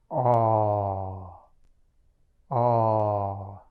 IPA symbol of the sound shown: ɔ